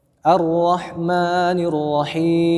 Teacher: Ar-rah atau kurang menekannya. Ar di sini ada tasydid, syiddah ya, artinya menekan pada makhraj ya.